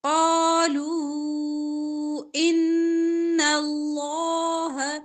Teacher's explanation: لو واو مدہ ہے لمبا کریں گے ان نون پہ شادہ گناہ کریں گے اللہ کا لام موٹا